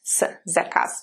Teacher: the last letter, because it's at the end of the word, remember, it's devoiced.